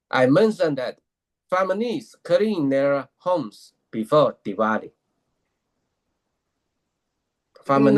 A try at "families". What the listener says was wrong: No, family, Lee. Say Lee, Lee, Lee is good, right? Yeah, Lee. Because, when you say it, the way I hear it as, this is how I'm hearing it. I'm hearing it like this. Families. No, not knees, right?